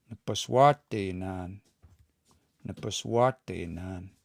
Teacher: Now the stress is going to be on wa.